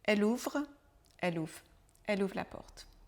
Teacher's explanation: Mais quand on parle très rapidement, le son final de ouvre est un peu contracté, donc on ne prononce pas vraiment le re à la fin du mot ouvrir.